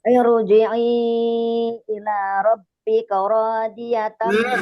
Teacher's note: ro sukun didahulukan oleh kasroh aridoh. Kasrohnya bukan asli. Jadi ro-nya tafkhim lagi.